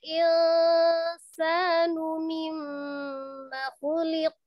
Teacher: Ditekan, ditahan, kemudian suaranya sebagian dimasukkan ke rongga hidung, ditahan kira-kira 2-3 harokat ya, disempurnakan. Gunnah yang paling lama itu sebenarnya terdapat pada nun dan mim tasdid ya.